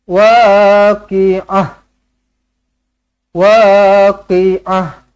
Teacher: Kalau berhenti pada ta marbutah tukarkan tukarkan huruf Ta marbutah ini menjadi huruf ha